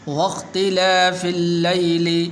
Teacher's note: یا حروف لین میں سے ہے تو اس لیے اس کو لمبا نہیں کریں گے. اسی طرح لام کے اوپر شد بھی موجود ہے.